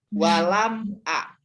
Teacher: Maka dia idhar syafawi. Idhar jelas, maka bunyi mimnya dibaca jelas.